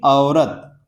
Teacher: अ से शुरू किया और फिर ओ भी इसमें आ गया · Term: संयुक्त स्वर